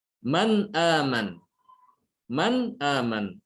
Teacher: Nun ada di ujung lidah sementara hamzah ada di pangkal tenggorokan bawah ya. Ini kan jauh. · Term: diidharkan